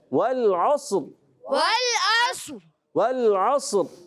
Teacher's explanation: और इससे पहले जो सौद आ रहा है, ये सौद तो बहुत ज़्यादा मोटा करके पढ़ना है। · रा साकिन होगा और ये रा पुर हो जाएगा